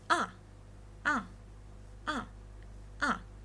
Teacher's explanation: from tip to the bottom and it's a falling tone